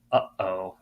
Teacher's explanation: the sort of like catch in your throat um sound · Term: glottal stop